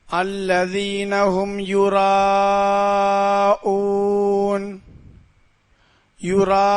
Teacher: அந்த ராவை 6 அலிஃப் அளவு நீட்டி ஓத வேண்டும் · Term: பெரிய மத்து